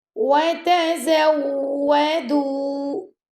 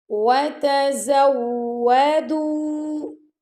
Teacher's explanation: واو کو پڑھتے وقت آپ کے جو لپس ہیں نا وہ دانتوں کو ٹچ نہیں کرنے چاہیے، گول کریں گے اپنے لپس کو